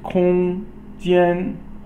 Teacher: 空间, all first tone, which is the high level tone